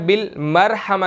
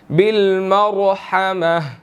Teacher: तो यहाँ पर रॉ जो है वो साकिन है, ठीक है, लेकिन इसके पहले ज़बर है, हमने इसको मोटा पढ़ना है